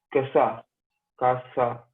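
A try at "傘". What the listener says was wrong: Khasa. They have Kha. They don't have K. So Kha pronunciation will be there. Khasa. Khasa.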